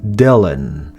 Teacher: le bout de la langue revient en contact de la petite bosse et on ne relâche pas l'air à la fin du mot